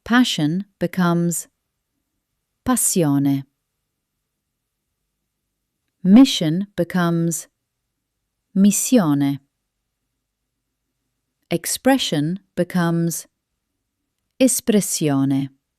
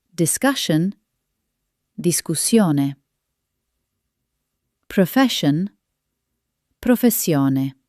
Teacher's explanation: The double s it must be long, strong and full of energy.